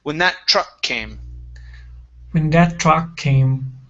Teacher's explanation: we can combine the the k sound on truck and the k sound on came together